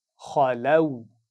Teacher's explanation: اس سے پہلے ایک آواز ہے خا کی زبر کے ساتھ جو کہ موٹی پڑھی جاتی ہے۔ لام کی آواز یہاں موٹی نہیں ہوگی، اس کا خیال رکھیے۔ · لام کو ملائیں گے واو کے ساتھ اور لین کرتے ہوئے پڑھیں گے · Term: لین کی آواز